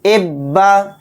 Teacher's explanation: جس حرف پر تشدید ہوتی ہے اس حرف کو 2 بار پڑھنا پڑتا ہے، اور اس حرف کو پڑھتے ہوئے اس حرف کے اندر سختی کے ساتھ ہم پڑھیں گے